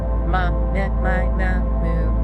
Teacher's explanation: The M sound forces the vibration to the lips. It's very frontal,